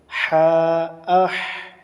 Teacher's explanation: সা জিম আজ আজ জিম সা আস তা আত বা আবা আলিফ বা তা সা জিম এই সাটু একটু পাতলা হবে সা জিম জিম আজ জিম হা এবং খা [নাক ডাকা] হা খার মাখরাজটা হচ্ছে অসতে হলক কন্ঠনালীর মধ্যস্থল